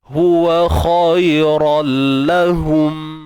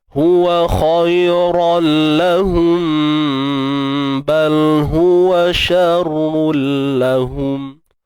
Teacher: Kalau berhenti kita zahirkan, jelaskan mim. Kalau kita sambung baru kita ikhfa, sembunyikan mim mati tu.